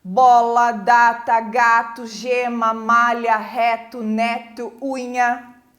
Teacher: esses são todos os sons que fazem vibrar, né, as nossas cordas vocais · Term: consoantes sonoras